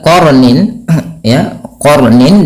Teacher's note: di sini qa-nya tebal dan ro-nya juga dibaca dengan tebal